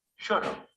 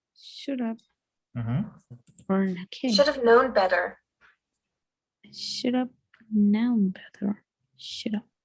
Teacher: When we use the auxiliary have after a modal, we pronounce the two words together. The word have loses its sound and is linked to the modal before it. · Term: reduced phrases